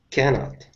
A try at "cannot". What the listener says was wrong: And even less T. So it's not a T. Your tongue will be farther back in your mouth. Cannot.